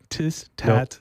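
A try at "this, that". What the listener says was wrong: No, this. It starts with a D. See, when you the Irish way they pronounce a TH. It starts like a this would be dis.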